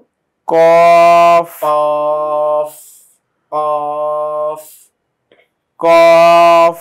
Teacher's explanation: জিহ্বার গোড়া উপরে লাগছে